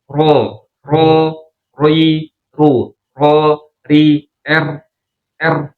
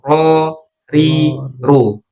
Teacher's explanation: Nyentuhnya ke gusi tuh ujung lidah ketemunya dengan gusi atas.